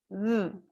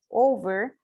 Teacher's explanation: V is voiced. It's also a fricative, and it's labiodental. That means that we use the lips and also the teeth.